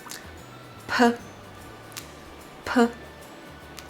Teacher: close your mouth and using your lips to block the air first, and then release it with a stronger airflow.